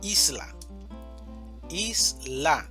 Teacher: Seguimos con la palabra isla, isla, 2 sílabas. La mayor fuerza de voz está en is, isla.